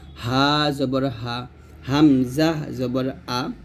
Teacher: হা এবং হামজা এই দুইটি হরফ হলকের শুরু থেকে শুরু থেকে উচ্চারণ করতে হবে